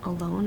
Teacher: the word alone the second part of that word is automatically stressed